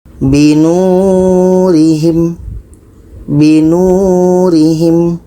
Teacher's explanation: Nu ini dibaca panjang karena ada waw mati sebelumnya baris depan. Ada waw mati sebelumnya baris depan. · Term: mad asli waw